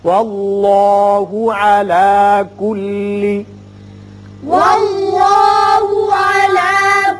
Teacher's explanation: اس میں اللہ کا لام پر ہوگا اس لیے کہ پہلے حرف پر زبر ہے